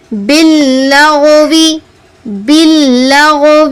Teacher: تفخیم، یعنی پر پڑھنا ہے. غائن پر ہے تفخیم، اس کو پر پڑھیں گے